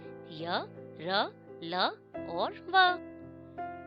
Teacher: जिन व्यंजनों का उच्चारण स्वर तथा व्यंजन के मध्य का होता है, यानी जिनके उच्चारण के समय जीभ मुंह के किसी भी भाग को स्पर्श नहीं करती, उन्हें अंतस्थ कहते हैं। ये 4 प्रकार के होते हैं, य, र, ल और व।